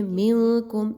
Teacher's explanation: منکم، نون ساکن کے بعد کاف آ گیا، اخفا کیا جائے گا، آواز کو ناک میں چھپائیے اور یہاں پر آپ نے غنہ کرنا ہے، نون کی آواز کو کلیئر نہیں پڑھنا۔